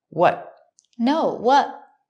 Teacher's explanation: The T in what is also a stop T. Stop the air, but don't release the T.